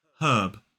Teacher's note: in a modern British RP accent, we do pronounce that H, herb, and we do not pronounce the R